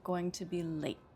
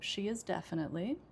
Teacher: And then I said going to be late. So, the two words that I said loudest and most clearly are definitely and late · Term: sentence stress